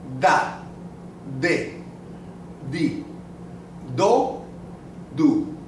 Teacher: you can see your tongue touching the teeth